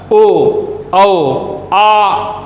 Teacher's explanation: आ देखो मुख के पिछले भाग से निकल के आता, ओ औ आ। डॉक्टर बोलते हो तो डॉक्टर के लिए आ की मात्रा का प्रयोग पीछे से लेकर के आते हो। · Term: पश्च